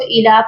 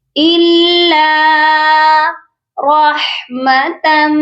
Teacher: اِلَّا، لام مشدد ہے، بہت سے لوگ اس کو اِلا پڑھتے ہیں، اِلا رحمتم، لام پر سختی کرنی ہے کیونکہ لام مشدد ہے، اس کو ہم سختی سے پڑھیں گے۔ اِلَّا رحمتم، یہاں پر دیکھیے رحمہ کی جو تا ہے اس کے اوپر دو زبر کی تنوین ہے، اور تنوین کو ہم نے میم مشدد کے ساتھ ملا کر غنہ کرنا ہے۔